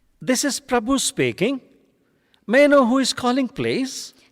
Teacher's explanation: Rising intonation to create a friendly tone